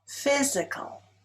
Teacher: Physical is stressed on the first syllable.